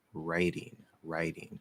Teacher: If it's written with a T and it flaps, it is voiced. It becomes a D sound.